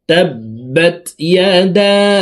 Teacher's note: মদের হরফের উপরে চিকন চিহ্ন বামে হামজা, মধ্যে মুনফাসিল 3 আলিফ টানিয়া পড়িতে হয়। তো দাল হরফকে 3 আলিফ টানে পড়ব